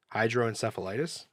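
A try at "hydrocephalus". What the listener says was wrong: Yeah, you're saying the itis part. That thing has an LUS at the end. At least that's the one I've been seeing. Hydroencephalus, I guess. I just heard the itis.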